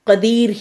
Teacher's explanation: اس را کو باریک رکھیں گے، قا کو موٹا رکھیں گے